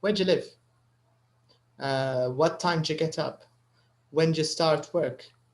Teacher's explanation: اوكي هي مش خطأ لو انت قلتي do you get up ما فيهاش بأس عادي بس لو انت تلاحظي المتكلم لما يقول فهم ما يقولش do you يقول جا where do you live جا يصير نوع من الدمج بين ال do وال you يبدأ معاش صوتها do you حيصبح صوتها ج